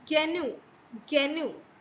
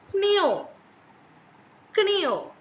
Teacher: So the voice stop G in Latin, it changes to K in Old English, which is a voiceless stop. So voice stop changes into voiceless stop.